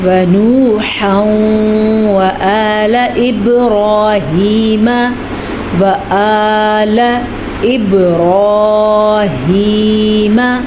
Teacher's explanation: تنوین کے بعد واو ہے، تو ہم ان دونوں کو ملائیں گے، غنہ کریں گے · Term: ادغام بالغنہ